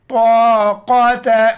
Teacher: طا اور قاف موٹے الفاظ موٹا کر کے پڑھیں گے. طا الف زبر طا، قاف زبر قا، تا زبر تا، طاقت لنا، لن نون کو لام کے ساتھ ملائیں گے.